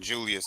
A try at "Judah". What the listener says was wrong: Judah. Judah's without the S. Judah.